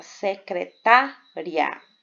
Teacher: Primeiro nós temos uma semivogal I e depois a vogal A, por isso que ele é crescente, som fraco, para depois o som forte. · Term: ditongo crescente